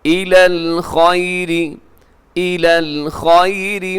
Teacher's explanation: اس میں را باریک ہے اور اس میں حرف خا، اسے موٹا رکھیے گا